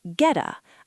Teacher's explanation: I stopped the sound in my throat.